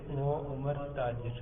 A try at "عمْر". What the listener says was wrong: ہاں وہ تاجر عمر، عمر نہیں عمر، میم ساکن ہے. وہ تاجر عمر،